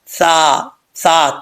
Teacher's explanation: سا، سا، تین نقطوں والا، زبان کی نوک اوپر والے دانتوں کے نچلے حصے سے لگے تو سا پڑھا جاتا ہے